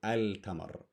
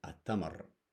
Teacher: So we don't go al-tamar, we just go at-tamar. We assimilate the lam into the a because this letter is a sun letter